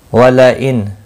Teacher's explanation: नून साकिन के बाद हमजा आया है, इजहार हल्की होगा